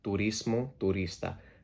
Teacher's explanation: tourism drops the OU in tourism because in Spanish there's no OU diphthong